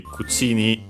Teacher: cucini, so yeah, low, high, and then also the particle stays high because it's actually unaccented